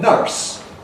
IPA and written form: nʌrs (nurse)